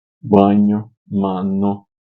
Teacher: Então, as vogais consoantes nasais são aquelas produzidas com obstrução total e momentânea do fluxo de ar nas cavidades orais, abaixando o véu palatino e permitindo a vibração do ar nas cavidades nasais